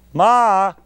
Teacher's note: that sound begins with an attack, an ictus, ma, and ends in a descending glide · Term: ictus plus glide